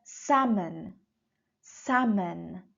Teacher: L is not pronounced in this word